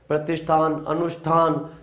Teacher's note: मूर्धन्य स और थ का ठ हो जाता है